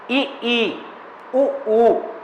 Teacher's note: ई उ ऊ न, इनके उच्चारण में मुख सबसे कम खुलता है। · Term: संवृत्त